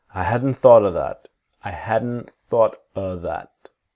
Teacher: wherein hadn't the t is silent